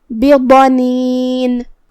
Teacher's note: ضاد کی ادائیگی زبان کے کروٹ اور اوپر کے داڑھوں کی جڑ سے ہے تو ہم ضاد کو وہیں سے پڑھیں گے. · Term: حرف الضاد